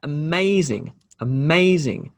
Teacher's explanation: so the emphasis here is in the middle of the word